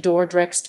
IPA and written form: ˈdɔrdrɛxt (Dordrecht)